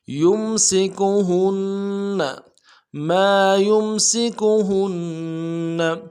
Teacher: کی سیٹی باریک ہوگی، کاف کو نرم سے ادا کریں گے، ہا کو بھی نرم سے ادا کریں گے، نون کے ساتھ ملانا ہے، نون کے اوپر تشدید زور دیں گے ، اگلے نون کو نرم سے ادا کریں گے۔ یمسکہن ما